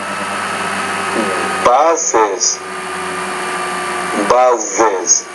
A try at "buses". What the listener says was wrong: Good, good. Your medial consonant sounds pretty good.